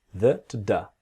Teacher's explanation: when you have the word 'the' very quickly, it sounds like a duh